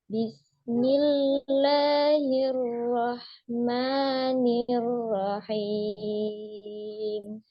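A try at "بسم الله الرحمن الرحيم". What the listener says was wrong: Sama ya, roknya juga belum tebal ya.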